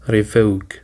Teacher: Revoke includes two syllables, re and voke, and the stress is on the second syllable